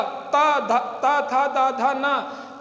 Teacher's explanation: जीभ दांत का स्पर्श करती है